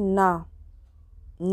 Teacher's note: ना का उच्चारण स्थान है दंत और नासिका